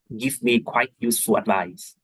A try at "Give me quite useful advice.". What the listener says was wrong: For some reason, whenever you just read an answer aloud, you sound like super robotic.